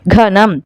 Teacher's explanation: ఘ అనేది ఒత్తి పలుకుతున్నాం, జట్కా ఉంది కదా, ఈ ఘనం అనేది మనకి ఘ అని ఒత్తి పలుకుతున్నాం కాబట్టి ఇది మహాప్రాణాక్షరం, ఘనం.